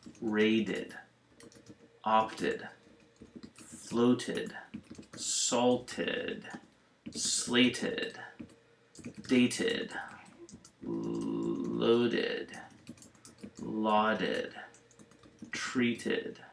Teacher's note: now some where the Ed sounds like an ID or ID